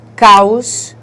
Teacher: O som começa forte, porque a vogal tem o som forte, e vai para a semivogal de som fraco, por isso que ele se chama decrescente. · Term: ditongos decrescentes